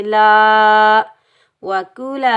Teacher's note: کاف کو ہم باریک پڑھیں گے، کاف کے اوپر پیش، بغیر کھینچے پڑھیں گے کو۔ لام کے اوپر زبر آگے الف خالی ہے، یہ الف مدہ، اس کو ہم ایک الف کی مقدار کھینچ کر ادا کریں گے